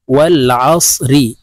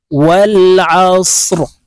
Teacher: র কে ওয়াকফের ক্ষেত্রে সাকিন করে ফেলবো, এখানে এইভাবে থামবো আমরা।